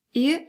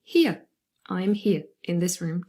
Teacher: so now we're going to move from e to uh to form our diphthong ear